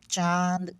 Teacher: जिनका उच्चारण करोगे तो नाक और मुंह दोनों से जो हवा है ना वो निकलेगा, तो वो क्या कहलाएगा, अनुनासिक कहलाएगा। इस प्रकार से जो चांद वाला जो आएगा ना, जैसे देखो उच्चारण करो तो नाक से भी आ रहा है, अगर नाक बंद करके देखो, ये जो उदाहरण दिया उसको, अजीब सा आ रहा है ना, नाक से भी उसका हवा निकलता है, ठीक है।